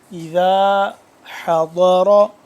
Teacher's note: حا حلق کے درمیانی حصے سے دوسرے ہا سے جدا کر کے، ہا نہیں پڑھنا حا کر کے پڑھنا ہے کیونکہ اس کے جو مطلب میں فرق ہو جاتا ہے، اذا